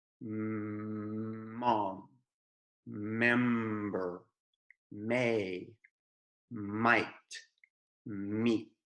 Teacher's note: the M is made with your mouth totally closed and without moving your tongue. It's produced in the back of the mouth near your throat.